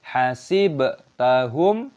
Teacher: Ba dalam hasib memiliki sukun. Kita membacanya sebagai qalqalah. Kita memantulkan suara, dibaca sebagai hasibtahum.